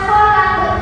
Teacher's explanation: khalaqo dibaca khalaq termasuk contoh qalqalah karena matinya secara tidak asli